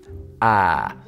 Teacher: you make that sound with your mouth open and you can feel your tongue is sort of toward the front of your mouth